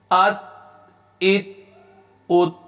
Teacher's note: تا حروف قلقلہ میں سے نہیں ہے، لہذا اس کو ہلائیں گے نہیں